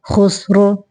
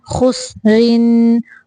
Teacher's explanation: حبل خا پیش سین خس را دو زیر رن خسرن خسرو وقف کی صورت میں را کو موٹا پڑھیں گے اور ملانے کی صورت یعنی وصل کی صورت میں ہم را کو باریک پڑھیں گے کیونکہ را کے نیچے دو زیریں ہیں